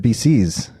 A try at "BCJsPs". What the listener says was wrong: No, it's just one C.